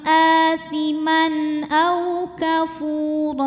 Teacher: tanwin fathah menghadapi huruf halqi atau huruf tenggorokan yaitu Hamzah maka tanwin ini kita bunyikan dengan jelas jadi bunyinya masih n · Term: zhar halqi